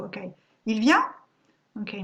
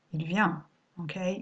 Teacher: my voice is rising here at the end so you understand it's a question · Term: rising intonation